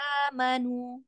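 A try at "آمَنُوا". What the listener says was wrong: Amanu. A-nya ada mat di situ mat badal ya. Amanu. A-nya dikasih dua harokatnya. Amanu.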